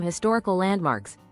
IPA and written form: hɪˈstɒr.ɪ.kəl ˈlænd.mɑːks (Historical landmarks)